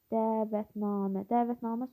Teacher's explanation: Dəvətnamə sözündə iki uzanma var